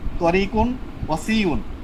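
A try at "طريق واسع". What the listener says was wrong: ওয়ের মধ্যে টান দিন, ওয়াসিউন।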